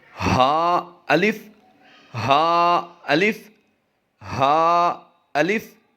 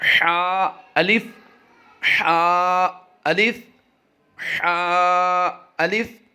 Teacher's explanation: ہا جو ہوتا ہے گول ہا حلق کے نیچے والے حصے سے ادا ہوتا ہے، اور حا جو ہے حلق کے درمیان والے حصہ سے ادا ہوتا ہے